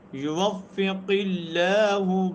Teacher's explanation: لفظ اللہ سے پہلے اگر زیر آ جاتی ہے تو اس وقت لفظ اللہ کیا ہوگا، بریک پڑھا جائے گا، ترقیق کے ساتھ پڑھا جائے گا